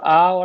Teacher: और आ किससे बोला जाएगा? ये आपका कंठ से बोला जाएगा।